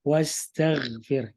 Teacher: kalau baca ke huruf gho mati, dia tidak boleh qalqala memantul, tapi dia juga tidak boleh tipis karena dia sifatnya tebal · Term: tafkhim